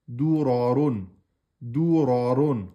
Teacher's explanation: Dou aminci, ra emphatique, ron emphatique.